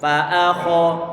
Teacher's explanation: Fa tipis, a tipis, kha tebal. Fa akha. Ini pengucapan kha kemarin kita sampaikan, jangan sampai nanti bibir kita ini ada peran dari kedua bibir dengan cara dimonyongkan jangan.